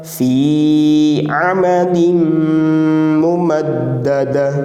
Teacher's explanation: फी में या मद्दा एक अलिफ तक खींचकर पढ़ना है